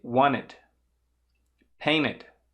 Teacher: Só um detalhe, ali na pronúncia, essa última, que tem depois do T ou do D, as palavras wanted e painted, como você tem um NTE, também é possível pronunciar sem falar o T, tá? Com o T mudo.